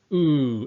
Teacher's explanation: I'm not going to open up my mouth in fact ooh it's extremely hard to be able to make that ooh sound while maintaining a unrounded mouth position